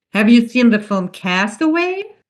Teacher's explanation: because it's a yes-no question. It goes up at the end, the pitch.